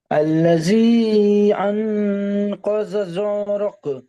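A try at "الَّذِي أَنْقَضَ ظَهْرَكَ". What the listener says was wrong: জহরক, হাটা উচ্চারণ করেন, জ হা জবর জহ। ওই হাটা একটু উচ্চারণ বড় হার মতো হয়ে যাচ্ছে। জহরক, জহরক, আল্লাযী আনকাযা যাহরাক।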